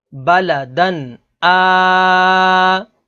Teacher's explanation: اس میں ناظرین تنوین کے بعد اگلا حرف حمزہ ہے، حمزہ حروف حلقی میں سے ہے، تو یہاں پر اظہار ہوگا یعنی غنہ نہیں کریں گے